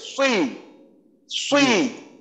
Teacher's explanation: জিহ্বার গোড়াকে উপরের দিকে তুলতে হবে, তাহলে হরফটা মোটা হবে, এবং মুখটা একটু সংকুচিত হয়ে আসবে, মুখটা একটু প্রসারিত অবস্থায় না থেকে মুখটা একটু সংকুচিত হয়ে যাবে, সুই, সুই। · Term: সদের সুই